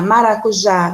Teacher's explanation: Maracujá vai ser uma palavra oxítona, porque a sílaba mais forte, a sílaba tônica é o já, e é a última